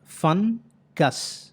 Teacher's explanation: ఫన్ అనేటువంటి syllable stressed syllable, గస్ అనేటువంటి syllable unstressed syllable